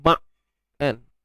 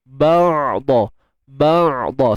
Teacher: Untuk huruf ain kita matikan dia dan kat sini ada sifat tawassut pada ain. Suara kita tu pastikan dia tidak terlalu tertahan.